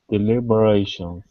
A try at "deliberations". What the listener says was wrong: Okay, very nice.